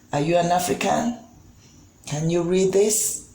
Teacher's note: While other questions, okay, that are known as yes or no questions, or that can be answered with simple yes or no, fall under rising intonation. Because at the end of these questions, the voice pitch goes up. Our voice pitch goes up at the end of these questions, these yes or no questions.